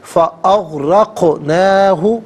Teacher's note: قاف ساکن ہے لیکن یہاں پر قلقلہ ہوگا، آواز لوٹتی بھی محسوس ہوگی۔ فاغرقناہ، نون کھڑا زبر نہ اور نون الف زبر نہ دونوں طریقوں سے پڑھنا درست ہے۔ · را پر زبر ہے، را کو پر کر کے پڑھیں گے، قاف ساکن ہے لیکن یہاں پر قلقلہ ہوگا، آواز لوٹتی بھی محسوس ہوگی۔